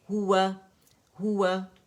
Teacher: اور ہا دمہ ہے تو کمپلیٹ رول کریں گے اپنے لپس کو